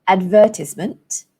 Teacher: in British English the stress falls on the second syllable